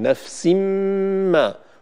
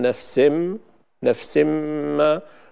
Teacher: نفس ما، ولا نقول نفسم، نفسم ما، ولا نولد مثلا حرف مد بعد السين قبل الغنة فنقول نفسم، نفسم ما، هذا توليد لمدة زمنية لا ينبغي أن نفعله.